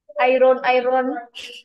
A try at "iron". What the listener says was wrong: Bukan O-Y-E-N, ha? Bukan O-Y-E-N, ha? Dia A-Y-E-N. Ni bunyinya iron. Iron. Iron.